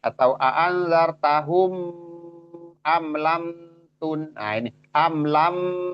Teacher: amlamun itu enggak boleh dibaca tahan gitu karena dia izhar. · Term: izhar syafawi